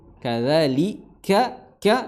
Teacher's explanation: ka dipangkal lidah bertemu dengan langit-langit atas pertengahan ya antara langit yang lunak dan langit-langit yang berdaging ya hanaqul admi dan hanaqul admi pertengahan lahmi dan admi ya yang empuk maupun yang yang keras. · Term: kaf